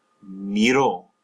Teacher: with AR verbs, the O will come in for the third person preterite, third person singular, but you stress the O